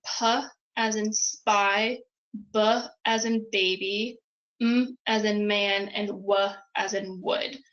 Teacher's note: we'll start in the front with bilabial sounds um so again these are sounds that are made with both of your lips